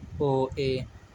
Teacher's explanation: अर्धसंवृत जिनके उच्चारण में संवृत की अपेक्षा थोड़ा सा मुंह खुलता है, ओ, ए। विवृत स्वर जिनके उच्चारण में मुंह सबसे ज़्यादा खुलता है, आ।